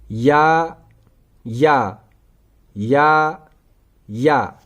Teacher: या का मखारिज है जुबान का दरमियानी हिस्सा, तालों का दरमियानी हिस्सा। जुबान का दरमियानी हिस्सा, तालों का दरमियानी हिस्सा।